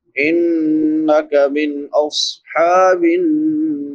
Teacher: ہا ہے حلق کے درمیان سے ادا ہوتی ہے جہاں سے عین ادا ہوتی ہے، نون مشدد پہ غنہ ہوتا ہے، باقی ساری چیزیں بیان ہو چکی ہیں۔ · نون مشدد شد والا نون اس پہ غنہ ہوگا